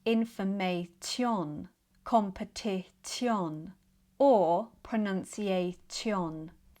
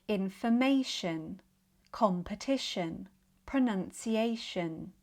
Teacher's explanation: in some situations where t is followed by a weak i sound, it becomes sh. Such as in words that end in t i o n, shun. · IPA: /ʃən/